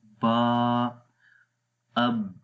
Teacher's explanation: استفال کا مطلب ہوتا ہے باریک پڑھنا، تو با کو ہم باریک پڑھتے ہیں، با، اب، تو یہ باریک ہو رہا ہے، با، ٹھیک ہے، اس میں کوئی موٹائی نہیں ہے۔